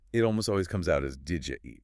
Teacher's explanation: that did and you making a J sound again. Did ya? Exactly the same mechanism as in what-ya.